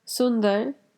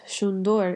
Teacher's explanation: in Urdu they say the sound S, but in Sylheti this becomes a sh sound · the S sound becomes the sh sound, and the A right before the R turns into an O